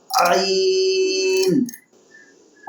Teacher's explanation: عین، بالکل باریک کر کے حروف حلقیہ میں سے شامل ہے، حلق سے نکلے گا